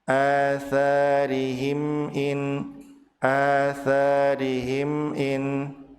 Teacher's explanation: Mim sukun bertemu dengan hamzah dibaca jelas tanpa ada jeda dan tanpa dipantulkan di huruf mim.